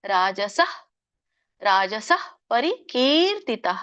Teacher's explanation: ಅನ್ಸಹ ಅನ್ನುವಂಥ ವಿಸರ್ಗ ಪೂರ್ಣ ಹೇಳ್ಬೇಡಿ ಅಲ್ಲಿ.